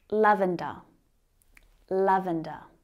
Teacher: It's got three syllables. Our stress is on the first syllable.